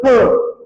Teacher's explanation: क मध्ये जर मी ह मिसळला तर त्याचा बनतो ख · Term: महाप्राण